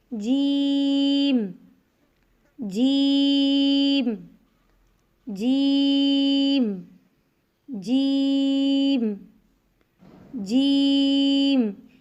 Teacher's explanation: جیم کی ادائیگی میں زبان کے درمیان کو تالو کے ساتھ سختی سے لگا کر باریک آواز میں پڑھیں گے۔ کیسے؟ جیم، جیم، جیم، جیم، جیم۔